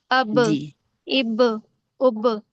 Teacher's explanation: पढ़ते वक्त इनके मखरज टक्कर खाकर अलग हो जाते हैं जिसकी वजह से क्या होता है दोहरी आवाज आती है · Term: कलकला